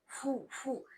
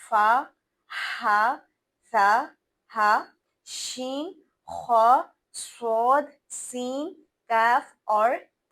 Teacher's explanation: तो हां सिफत हमस में हम हल्की सांस की आवाज यानी फूं की एक आवाज आपको निकलती महसूस होगी। अपने मुंह से फू फू यानी आवाज या हवा बाहर निकल के आएगी।